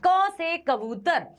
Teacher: हमने कंठ से ही बोला, हमने गले से ही बोला, तो कंठ ही है इसका उच्चारण स्थान।